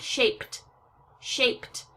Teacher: when I make shape into a past tense verb, shaped, you heard that T sound